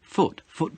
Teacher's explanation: he puts the stress on ball it should be on foot